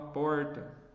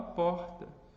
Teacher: No Sudeste, onde eu nasci, a gente fala com R retroflexo